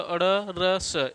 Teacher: ये सभी मूर्धा से उच्चरित होते हैं, इसलिए मूर्धन्य कहे जाते हैं।